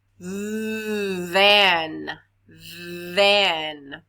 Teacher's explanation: you feel your throat vibrating very good that means that that is a voiced th